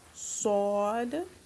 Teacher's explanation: Saad is another heavy letter. You pronounce it with a round mouth.